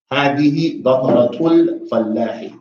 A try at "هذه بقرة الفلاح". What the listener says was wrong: Don't need to say L. So you're saying what? هذه. You're saying هذه. Everybody makes this mistake. Everybody says هذه. For some reason, instead of saying هذه, everybody says هذا, which is not.